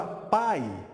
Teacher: um é plenamente realizado, que é o A, e o I é semivogal. Então eu tenho uma vogal e aqui uma semivogal. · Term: ditongo decrescente